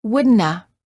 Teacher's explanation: in more casual situations the have of the word would not have sounds like a as in Woulda